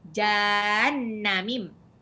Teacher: Hati-hati, nunnya tidak panjang.